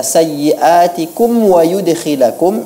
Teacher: Dan pada kata sayyiatikum wa yudkhilakum, ini perlu diperjelas huruf mimnya, huruf mim sukun bertemu dengan waw, ini adalah izhar syafawi, harus dibaca dengan jelas.